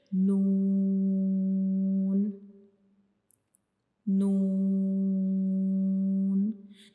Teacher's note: जब हम नून को पढ़ते हैं तो हमारी जबान की जो नोक होती है वो हमारे ऊपर वाले जो सामने वाले दो दांत होते हैं उनकी अंदर वाली साइड पे जो मसूड़े होते हैं उनको टच करेगी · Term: नून का मखरिज